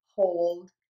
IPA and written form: hoʊld (HOLD)